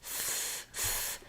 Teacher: the Restriction of air happens between the teeth and the tongue